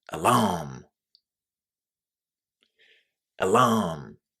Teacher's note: It's the second syllable and it's a really, really strong stress. So, make sure you say alarm stressing the second syllable.